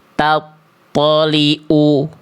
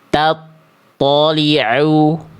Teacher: Tempat keluar huruf ain itu dilafalkan dari tenggorokan bagian tengah